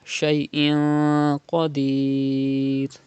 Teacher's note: Inna Allah ala kulli shay'in qadir, you can see qaf after 2 zir after tanween, so ikhfa will be done here because qaf is from ikhfa letters, and gunna will be done in tanween in 2 zir like this.